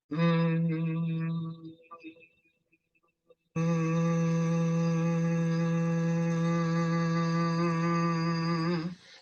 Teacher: it's one sustained, continuous pitch hummed, and like an M sound, and you want everything to be, you want to feel the resonance of it. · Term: Bhramari